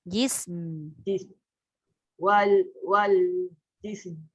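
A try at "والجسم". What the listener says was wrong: Bunyi jisim kan. Jisim. Matikan. Cuba matikan. Katalah mim tak ada. Wal jis. Lepas tu baru masuk mim. Wal jism. Wal jism.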